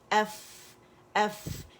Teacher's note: اس میں آواز بھی چل رہی ہے اور اس میں ساتھ کیا ہے کہ ہوا بھی نکل رہی، ہمس بھی ہے اس کے اندر